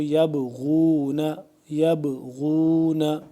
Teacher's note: با یہاں پہ قلقلہ کریں گے با کو